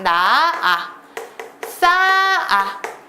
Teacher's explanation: 히읗이 발음되지 않고 각각 나아 싸아 이렇게 히읗이 없어지고 있다는 거 보이시나요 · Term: 히읗 탈락